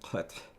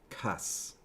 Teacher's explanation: you just have the spirantization at the end of the word